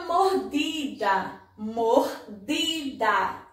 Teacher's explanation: olha o di como a gente falou forte mordida mordida o de é a sílaba tônica desta palavra a